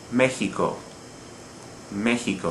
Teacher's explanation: a word that ends in a vowel but we stress not the second the last syllable but the third the last